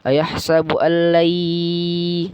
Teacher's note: nun mati ketemu ya, itu idgham bi gunnah. Jadi dia dimasukkan ke ya dan ditahan dan didengungkan 2 harakat